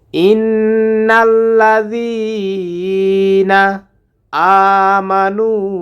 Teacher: বারিয়া ইন্নাল্লাজি [music] এখানে গুন্না হবে নুনের উপরে তাসদি আসার কারণে জালটা জিহ্বার আগা থেকে নরম করে উচ্চারণ করতে হবে